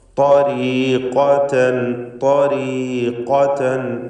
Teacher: ത്വരീഖതൻ പൂർണ്ണമായ തഫ്ഖീം കൊടുക്കണം. ഏറ്റവും കടുപ്പമുള്ള അഖ്വൽ ഹുറൂഫ് എന്ന് വിശേഷിപ്പിക്കപ്പെടുന്ന തഫ്ഖീമോടുകൂടി സ്വരഭാരത്തോടെ ഉച്ചരിക്കുക